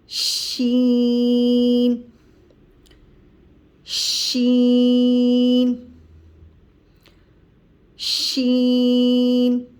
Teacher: شین کی ادائیگی زبان کا درمیانی حصہ اور اسی کے اوپر تالو کے درمیانی حصے سے شین ادا ہوتا ہے